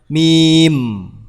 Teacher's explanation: makhrajnya di antara dua bibir dalam keadaan tertutup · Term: huruf mim